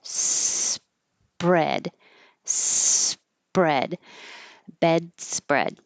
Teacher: As I'm closing my lips for the P, my tongue's back for the R.